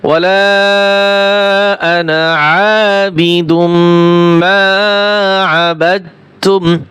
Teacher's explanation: সূরা কাফিরুনের এই আয়াতে আনা শব্দ টেনে পড়া যাবে না। তা সূরা কাফিরুনের আয়াতটা আছে, ওয়ালা আনা আবিদুম মা আবাদতুম, ওয়ালা আনা, আনা টান দেওয়া যাবে না।